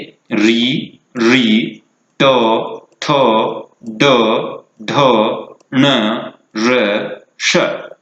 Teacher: इस प्रकार इन वर्णों का उच्चारण स्थान हुआ मूर्धा